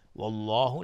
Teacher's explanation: والله لفظ جلاله مفخم هست، غلیظ تلفظ میشه، قبلش فتحه اومده